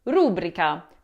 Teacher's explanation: many Italians pronounce it as rubrica, putting the accent on that first syllable